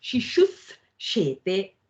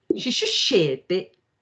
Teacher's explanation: So the s changes into a sh. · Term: ścutva sandhi